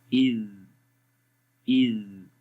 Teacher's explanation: زبان کی نوک ثنایا علیا کے کناروں پہ لگ رہی ہے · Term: ذال